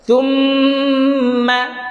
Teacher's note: Bukan macam tu. Kita tekan pada makhraj mim itu dua harakat. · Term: mim bersabdu